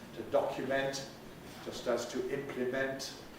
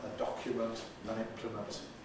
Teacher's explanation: I don't know if we also had the verb to document and the noun a document, which similarly are distinct because the verb keeps a strong vowel in the suffix, to document, just as to implement, and the noun, a document, an implement, weakens it